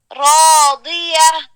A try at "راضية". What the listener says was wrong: دی دیکھیے دیا دیا. اب دال پڑھ رہی ہیں, ہم نے دال نہیں پڑھنا, ہم نے حرف الضاد بھارا پڑھنے. صاد صاد ضاد طا ضاد پڑھے.